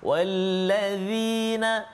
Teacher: Kemudian kita nak jelaskan juga iaitu pada kalimah wallazina zal. Wallazi, zal hujung lidah keluar sedikit, kena pergi kacip atas